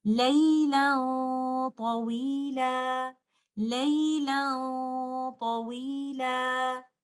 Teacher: We will hide the noon sakina. Our tip of the tongue will not touch the roof of the mouth. We will hold the ghunnah for some time. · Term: ikhfa